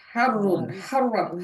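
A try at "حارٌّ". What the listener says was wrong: হারুন টান দেবেন তো।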